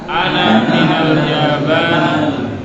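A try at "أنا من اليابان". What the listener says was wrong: Nah, ana minal Yabani. Nah, al-ya mamdudah wal ba mamdudah. Yabani.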